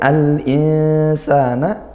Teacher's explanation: Kemudian al-insana, al-i ini izhar qamariyah, al lam ta'rif bertemu huruf hamzah. Nah, maka kita baca jelas lam sukunnya, jangan sampai tawallud, jangan juga ditekan